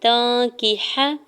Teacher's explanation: تا کے اوپر کھڑی زبر ہے، دو حرکت کھینچ کے ادا کریں گے۔ تانکیح، تا کے زبر کو نون ساکن کے ساتھ ملاتے ہوئے نون ساکن پہ اخفا کریں گے، کاف کی زیر کو ہا کے زبر کو بغیر کھینچے ہوئے ادا کریں گے۔